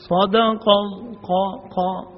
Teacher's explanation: پھر انہوں نے صدق اللہ قاف جو ہے اس کو صحیح ادا نہیں کیا، اس کے مخرج سے ادا نہیں ہوا. صدق قا زبان کی جڑ، تالو کا نرم حصہ، یہ قاف کا مخرج ہے